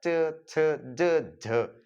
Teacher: इसमें जो है स्वर यंत्रियों में स्पर्श नहीं होकर मुख विवार में ही स्पर्श होता है, तो इसमें संघर्ष भी होता है। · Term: च वर्ग